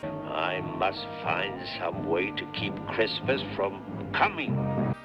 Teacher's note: Every breathy, domineering line that comes out of him oozes the grouchiness and sliminess